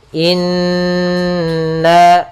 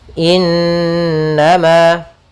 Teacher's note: Innama, kembali lagi kita menemukan di sini ada nun berharokat tasydid, kita namakan dengan gunnah. Cara membacanya yaitu ditahan suara n-nya 2 harokat.